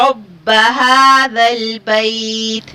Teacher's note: حروف لین ہے اور لین کے بعد ہم نے تا کو ساکن کر دیا تو مد لین عارض ہوگا